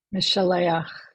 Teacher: So notice that we have the accent on the penultimate, second to last syllable, and we did the ach.